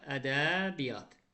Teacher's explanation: y-nin biri tələffüzə düşəcək, olacaq ədəbiyyat.